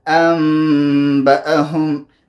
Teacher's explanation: میم مخرج خیشوم دی غنه دی په پوزه کې به غنه کوئ